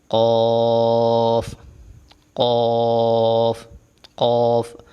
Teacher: اوپر والے تالو کے نرم حصے سے لگے، زبان کی جڑ اوپر والے تالو کے نرم حصے سے لگے تو یہ ادا ہوگا ۔ قوف قوف قوف، اور یہ بھی موٹا ادا ہوتا ہے،